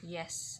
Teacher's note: The sixth is palatal. The front of body of tongue rise to the palatal region or the turned area at the roof of your mouth.